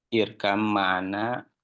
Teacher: b-nya dileburkan ke huruf mim seperti itu ya dimasukkan